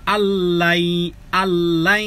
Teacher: নুন সাকিনে পরে লাম, ইদগামে বেলা গুন্নাহ ব্যতীত মিলিয়ে পড়তে হবে।